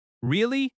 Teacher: Notice the rising tone at the end. Your voice goes up. That rising tone shows interest.